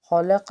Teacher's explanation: ہا اور قاف دونوں حروف مستعلیہ کے حرف ہیں، دونوں کو پر پڑھنا ہے